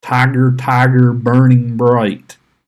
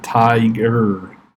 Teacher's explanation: a trochee, you have a stressed sound followed by an unstressed sound. So the great William Blake poem starts with "Tiger, tiger, burning bright." We have the tig, and then the right?